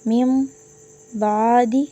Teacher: نون ساکن یا تنوین کے بعد حرف با آ جائے، صرف ایک حرف با، نون ساکن اور تنوین کے بعد با آ جائے تو اقلاب ہوگا، یعنی نون ساکن اور تنوین کو میم سے بدل کر اخفاء کریں گے، یعنی گننا کر کر پڑھیں گے